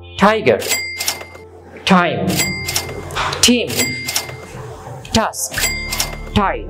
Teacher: শব্দের শুরুতে টি থাকলে ট না হয়ে ঠ এর মতো উচ্চারণ হবে।